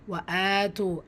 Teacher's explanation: அலிஃப் சகீரா 2 ஹரக்கத்தில் நீட்டம் கொடுக்கணும்